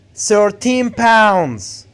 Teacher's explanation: You have to put the stress on pounds, not 13. Why? Because 13 here is an adjective.